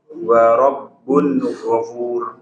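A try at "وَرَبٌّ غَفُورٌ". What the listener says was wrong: Ghafur agak dipanjangkan. Ghafur. Iya, jadi huruf ro ini tafkhim. Ghafur.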